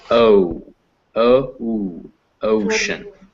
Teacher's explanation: But yeah, it's like that because the sound is not ocean, it's ocean. When you make that vowel, that O sound, you should feel your lips close up near the end of it.